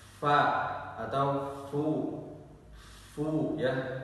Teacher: Jadi bibir bagian dalam bertemu dengan gigi seri atas. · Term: huruf fa